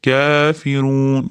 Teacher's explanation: kafdan keyin mana kichkina alifcha mad tabiiy turibdi. Bir, ikki deguncha cho'ziladi.